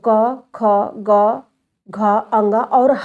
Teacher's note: यह ध्वनियां का उच्चारण स्थान कंठ है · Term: कंठ वर्ग